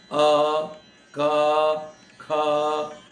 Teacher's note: आप सीधा गले से आवाज निकालेंगे, अ, क, ख, जो भी हरकत हो रही है आपके गले में हो रही है। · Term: कंठ